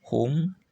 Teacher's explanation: Hum tidak usah didengungkan karena mim sukun menghadapi selain mim dan ba